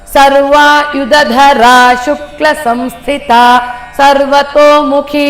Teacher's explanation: ಸರ್ವಯುದಧರ ಅಲ್ಲಿ ಡೌನ್ ಬಂತು ದೀರ್ಘ ಬಂತು ಶುಕ್ಲ ಅಲ್ಲಿ ಶಾರ್ಟ್ ಆಗಿ ಬರಬೇಕು ಶುಕ್ಲ ಬರಬಾರದು ಸಂಸ್ಥಿತ ಸರ್ವತೋಮುಖಿ ಓಕೆ ಈಗ ಮೂರು ಬಾರಿ ಒಟ್ಟಿಗೆ ಹೋಗೋಣ ಸಹಸ್ರದಲ